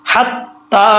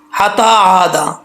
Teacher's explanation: یہاں پر اکثر لوگ پڑھتے ہیں حتا عادا، ایسا نہیں پڑھنا، تا کے اوپر شد ہے، جب تا کے اوپر شد ہے تو 2 دفعہ حرف پڑھا جاتا ہے